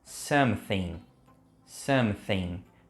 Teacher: perceba que eu tô colocando a língua no meio do dente